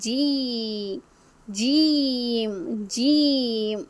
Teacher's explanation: നാവിന്റെ മധ്യഭാഗം നേരെ മേൽപോട്ട് പൊങ്ങുന്നതായി മനസ്സിലാകുന്നില്ലേ